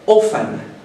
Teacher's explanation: But generally, this T is not pronounced. Geralmente esse T não é pronunciado, ele é uma letra silenciosa. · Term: silent letter